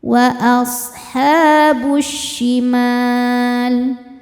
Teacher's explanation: Cara bacanya alif lam tidak dibaca masuk langsung ke syin